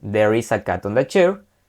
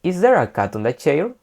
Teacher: cuando tengamos una pregunta, la entonación va a acabar hacia arriba